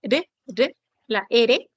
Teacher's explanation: modo vibrante aquí se refiere la vibración pero de la lengua la lengua va a vibrar en la zona alveolar va a golpear ahí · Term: vibrante simple